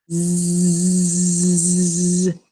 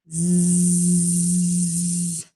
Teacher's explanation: So the difference between S and Z is that our voice is turned on. So if you were to put your hand here when you're making the Z sound, you will feel your voice vibrate.